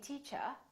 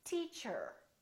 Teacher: In British English, people generally don't pronounce the final R, the R at the end of the word. So they say teacher. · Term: British R